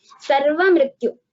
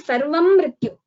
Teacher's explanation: मकारस्य मृत्यु पूर्वं द्वित्वं नास्ति, there is no doubling before मकार, सर्वमृत्यु, इट इज नॉट सर्वं मृत्यु, सर्वमृत्युनिवारिणी।